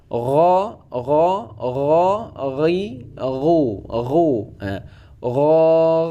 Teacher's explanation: dia itu tidak terlalu getar dan tidak qalqalah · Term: huruf ghain